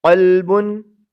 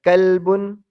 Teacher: 2 نقطوں والے قاف کے ساتھ کہ جس کو موٹا کر کے پڑھتے ہیں